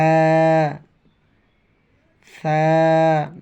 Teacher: নরমভাবে জিহ্বার আগা উপরের দাঁতের আগার সঙ্গে